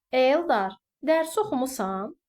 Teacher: xitab kimi işlənəndə vurğu dərhal bir vahid əvvələ, yəni sözün və yaxud adın əvvəlinə keçmiş olur. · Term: Xitablarda vurğu